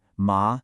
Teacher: A falling then rising tone